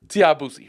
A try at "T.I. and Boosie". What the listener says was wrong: You gotta start pronouncing things. So that sounded like Tia Bussy.